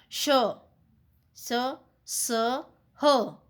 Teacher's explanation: इनका उच्चारण रगड़ या घर्षण से उत्पन्न वायु से होता है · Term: उष्म व्यंजन